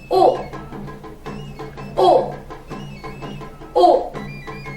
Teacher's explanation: Seguimos con la U glotalizada